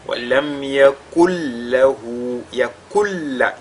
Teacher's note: Donc on ne dira pas yakun lahu, le nun ne sera plus perceptible, on ne va plus entendre le nun, mais ce nun, n'est-ce pas, il va entrer totalement dans la lettre lam. Et cette lettre lam, elle est doublée, et c'est ce qu'on doit ressortir, c'est-à-dire le caractère ou l'aspect doublé de cette lettre lam là.